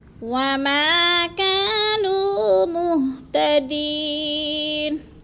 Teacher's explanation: وما کو بھی لمبا کرنا ہے، الف مدہ ہے، کا کو بھی لمبا کرنا ہے، نو کو بھی لمبا کرنا ہے